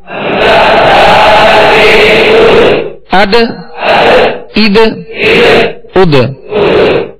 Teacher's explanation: دال بھی حروف ماشاءاللہ حروف قلقلہ میں سے ہے، اور اس میں قلقلہ کرنا ہے یعنی آواز لوٹتی ہوئی آئے، آواز میں جنبش ہو